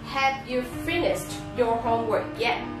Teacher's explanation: Câu này là con đã hoàn thành bài tập của mình chưa, ngữ điệu cũng sẽ đưa đi lên.